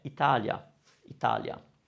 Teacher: the I is softened. It becomes a semi-vowel almost, which means we don't stretch it as much and we just go over it more quickly